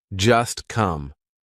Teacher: Just is followed by come, so that T is in between two consonants. It's in between the S and the C of come. So we're going to make it silent. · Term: silent T